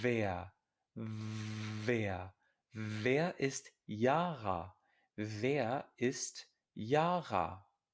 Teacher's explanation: Este sonido es labio dental. Hay que poner el labio de abajo en los dientes de arriba.